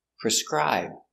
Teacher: The stress is on the second syllable.